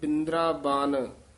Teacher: ਬਿੰਦਰਾ ਪਦ ਜਿਹੜਾ ਕਸ ਕੇ ਬੋਲਣਾ ਬਨ ਭੋਲਾ ਬੋਲਣਾ